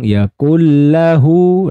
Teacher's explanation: Jadi dileburkan saja atau dimasukkan saja dengan tanpa didengungkan. Jadi nggak boleh tahan, oke? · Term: Idam bila gunna, Idgham bila gunnah